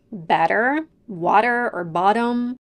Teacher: one very important sound in American English, a fast D sound, also known as a flap T or D